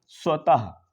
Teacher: इसमें अंत में हा की ध्वनि जो है वह निकलती है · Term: विसर्ग